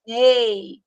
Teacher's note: Ei, sai pela boca. Então, não é decrescente nasal, é oral.